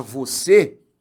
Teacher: eu quero que você veja que a sílaba acentuada é a última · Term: palavra oxítona